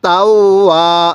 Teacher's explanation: ওয়াওয়ের মধ্যে এক আলিফ টান দিব, কারণ জবরের পরে এই যে একটি খালি আলিফ, জবরের পরে এরকম খালি আলিফ থাকলে এক আলিফ টানতে হবে।